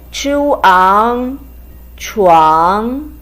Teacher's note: It's a combination of chi and uang with the second tone.